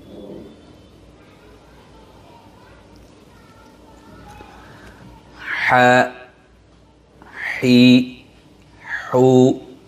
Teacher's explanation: 2 নম্বর মাখরাজ হলকের মধ্যখান হইতে আইন হা দুটি হরফ উচ্চারিত হয়।